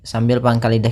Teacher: di sini shadnya tebal Jangan dibaca dengan huruf Sin